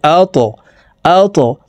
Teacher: আল্লাযী, হামজাহ ত জবর আত, ত কলকলার হরফ উপরের দিকে ধাবিত করে ধাক্কা দিয়ে উচ্চারণ করতে হবে